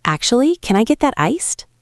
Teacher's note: It goes up at the end. It is friendly.